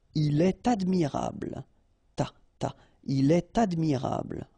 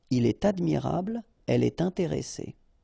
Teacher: in all these cases you should make the liaison, and in that case it's with T.